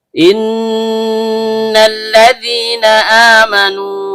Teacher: lamnya ujung lidah bertemu dengan langit-langit bagian depan. · Karena nunnya bertasydid, maka hukum bacaannya gunnah asli. Dibaca dengung dan setiap dengung keluar dari hidung.